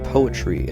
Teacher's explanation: it is a one stress syllable followed by two unstressed syllables the word poetry actually is a dactyl there are very few